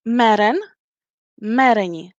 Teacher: the second to the last vowel in mereni is not long. That's why we stress the third to last syllable